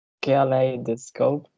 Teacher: The stress is in the second syllable.